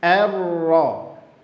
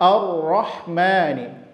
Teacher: Di sini juga kita pada poin yang kedua tadi, huruf tipis bertemu setelahnya huruf tebal. Hamzahnya dibaca tipis, ra-nya dibaca tebal. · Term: Tipis bertemu tebal